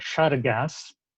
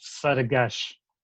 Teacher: на юге говорят шаргас, на севере большинство говорит саргаш